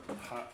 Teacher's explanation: Nah, huruf H ini ada di tenggorokan kita ya.